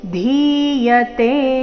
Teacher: ಧಿ ದೀರ್ಘ ಕೊನೆಯತೆ ದೀರ್ಘ